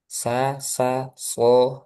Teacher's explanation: Jadi sa yang tebal jadi shad sama makhrajnya dengan sin dan zai.